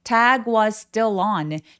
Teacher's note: was의 s 소리와 still의 s 소리가 만나서 한 번만 발음이 되는데요 · 애 소리는 Apple 할 때처럼 굉장히 긴 장음이에요. Tag was 아니고 tag was라고 길고 여유롭게 소리 내 주세요.